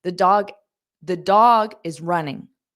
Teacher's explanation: we don't need to hear that auxiliary verb